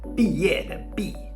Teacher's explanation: characters that are pronounced B, fourth tone